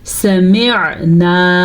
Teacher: عین کو واضح کر کے پڑھنا ہے اور یہ الف مدہ بھی ادا کرنا ہے